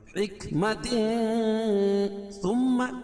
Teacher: میم مشدد ہے، اس میں غنہ ہوگا